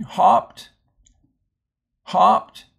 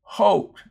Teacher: consonant closes this syllable and makes that oh short so that's a closed syllable and the O here's at the end of the syllable so